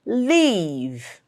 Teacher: the V sound here, make sure you make it a fricative sound and don't touch both your lips.